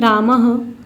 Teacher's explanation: विसर्ग जिसका उच्चारण हम ह से करते हैं।